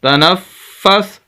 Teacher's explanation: نون کو فا کے ساتھ، فا مشدد سخت کر کے پڑھیں گے، آواز کو روک کر لفظ کے اوپر زور دے کر